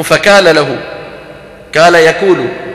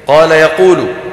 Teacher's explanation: في منطقة صفد بفلسطين وغيرها يجعلونه كالكاف